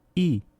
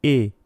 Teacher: En ruso se pronuncia como una vocal cerrada anterior no redondeada, i. En ucraniano, esta misma grafía corresponde a una vocal cerrada central no redondeada, e. Un sonido más central y diferente a la i ucraniana, que sí representa i, similar a la i rusa.